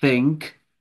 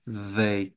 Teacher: É um S abafado pela língua, no primeiro, e o outro é um Z abafado pela língua, assim, mordida pela pontinha dos dentes, né? Thank, they, né?